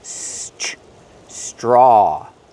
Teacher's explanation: We see the tr together making the ch- sound like train and truck together. Ch. Straw make the r sound with the voice.